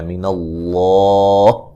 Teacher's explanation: یہاں لفظ اللہ کو موٹا ادا کریں گے، اس سے پہلے حرف پر زبر ہے اور وقفاً بڑی مد کے ساتھ پڑھ سکتے ہیں جیسے میں پہلے بتا چکا ہوں، کیونکہ کھڑی زبر بھی الف مدہ کے قائم مقام ہوتی ہے، ٹھیک ہے.